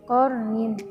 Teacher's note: Lalu pada kalimat qarnin itu ada hukum bacaan ro tafkhim karena ro sukun jatuh setelah harokat fathah, maka cara membacanya ditebalkan